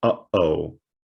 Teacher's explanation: And this apostrophe represents a glottal stop. Now, a glottal stop is a fancy linguistic term for the sound in the word uh-oh. It is that clicking, popping sound that is made in the throat, hence glottal, right?